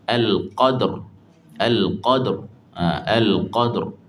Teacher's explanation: Ha tebalkan bunyi getaran ra tu. Getaran ra tu ditebalkan.